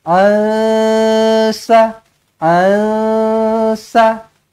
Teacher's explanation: Nun kosong bertemu dengan sin, ikhfa hakiki dengungkan 2 harakat.